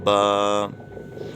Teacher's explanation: دونوں ہونٹوں کا جو تر حصہ رہتا ہے وہ دونوں حصے آپس میں ملیں گے تو حرف پڑھا جائے گا